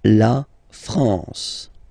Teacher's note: A-N here, nasal en.